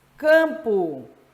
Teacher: representar esse dígrafo porque essas duas letras tem um único som o m serve simplesmente para nasalizar a vogal